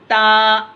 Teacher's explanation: ज़बान की नोक को ऊपर वाले दांतों की जड़ में लगाएंगे, दोनों दांतों के, तो ता अदा अदा होता।